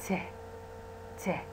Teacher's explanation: إذا تلاحظون أنا دا أسوي aspiration, يعني صوت اله واضح ويا ت ت ت